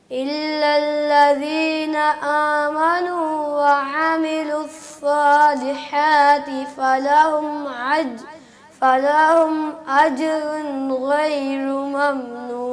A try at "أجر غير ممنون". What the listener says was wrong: رائے رہ گئی اینڈ پہ. اجر غیر, دونوں کو موٹا کریں.